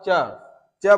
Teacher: च बोल रहे हैं तो आपके जो आपका जो जीभ होगा वह तालु से टच कर रहा है। तो जब तालु से टच करेगा तो वो तालव्य हो जाएगा।